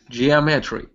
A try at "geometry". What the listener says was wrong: Almost. So, yeah, put the stress right there on the O. Geometry.